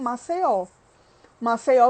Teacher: maceió vem no final da palavra mas ela permanece com som de ó porque ela é acentuada